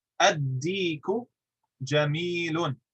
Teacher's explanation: listen to how he did not pronounce the lam. He jumped right into the dal and he doubled it.